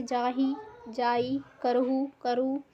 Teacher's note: इस बोली में मध्यम हा का लोप हो जाता है